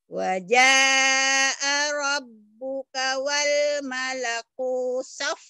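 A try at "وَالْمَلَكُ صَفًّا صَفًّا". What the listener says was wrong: Pendek. Wal malaku sofang, jangan sapang, sofang. Yang O jadi A jadi O.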